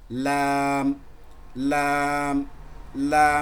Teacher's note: লাম লেটারটা কিভাবে উচ্চারণ হয় দেখেন, লাম জিহ্বার আগার কিনারা, এই যে জিহ্বার আগা, তার আগার যে কিনারা, আগা সামনের দিকের যে কিনারাটা, জিহ্বার আগার সামনের কিনারাটা সামনের উপরে দুই দাঁতের মাড়ির সঙ্গে লাগে, সামনের যে দুই দাঁত রয়েছে, সামনের এই যে দুই দাঁত, দুই দাঁতের এই যে গোড়া, এই দুই দাঁতের গোড়ার সঙ্গে আপনার এই জিহ্বার আগার কিনারাটা ঠেকিয়ে দিবেন।